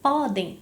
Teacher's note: Se eu tenho a palavra podem, a palavra podem é uma paroxítona, podem. Então, eu tenho aqui a sílaba tônica pó